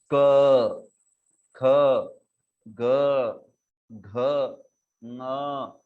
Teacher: हाँ, तो यहाँ पर हमारे मुख में एकदम अंतिम, एकदम जहाँ पे जिह्वा का मूल है वो भाग कंठ है, वहां से ये क आदि वर्ण उत्पन्न होते हैं। आप जब कहते हो क, हाँ, तो आप देखोगे कि आप आपके गले के एकदम पीछे, मुख के एकदम पीछे वाले भाग में अनुभव कर सकते हो कि वहां से ये उत्पन्न हो रहा है। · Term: कंठ्य